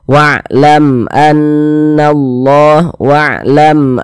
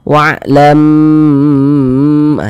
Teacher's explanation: karena dia izhar maka dibaca jelas tak berdengung pendek saja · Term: izhar syafawi